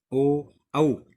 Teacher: ओ औ इनका उच्चारण स्थल कंठ ओष्ठ होता है, इसलिए इनको बोलते हैं कंठोष्ठे।